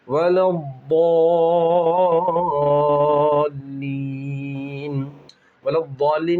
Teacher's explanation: वलद्दाल्लीन में ज़ाद मोटा पढ़ेंगे और बड़ा मद है इसलिए उसको 5 अलिफ के बराबर खींचेंगे